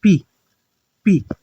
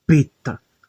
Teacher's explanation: Observe que não tem nenhum som aqui, como por exemplo, numa consoante sonora como beta.